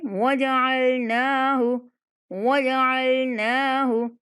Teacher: یہاں نون کو لمبا کریں گے، ہا کو نہیں کھینچیں گے